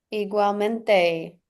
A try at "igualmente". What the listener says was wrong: Igualmente, perfect.